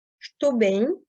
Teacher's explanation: le OU de estou qui se prononce bien O et pas OU